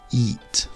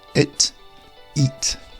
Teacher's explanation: Whereas the word eat is an elongated E. Eat. So practice saying this, maybe record yourself and listen back.